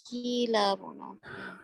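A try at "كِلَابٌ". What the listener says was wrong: کی نہ کریں اس کو یہ یا نہ لگائیں. کلابن.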